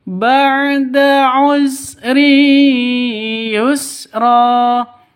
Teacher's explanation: Ini tanwin bertemu dengan ya. Cara bacanya masuk ke ya disertai dengung 2 ketukan. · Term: idgham bi gunnah